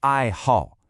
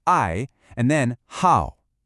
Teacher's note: It's two fourth tones back to back. The fourth tone is that sharp, falling one, like you're giving a command.